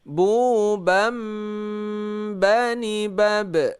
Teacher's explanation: Karena baris fathatain bertemu dengan ba, maka dibaca menjadi bunyi nun dibalikkan menjadi bunyi mim. Ini ada tanda-tanda mim kecil. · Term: iqlab